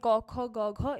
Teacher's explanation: কোমল তালু এবং জীবমূলের স্পর্শে কন্ঠধ্বনি উচ্চারিত হয়। · কোমল তালু এবং জিভমূলের স্পর্শে কণ্ঠধ্বনি উচ্চারিত হয়। তাহলে আমাদের কোমল তালু এবং আমাদের জিহ্বামূল এই দুইটা স্পর্শ করলে হচ্ছে যে কণ্ঠধ্বনিগুলো আছে আমাদের, ওই যে ক খ গ ঘ, এগুলো উচ্চারিত হয়।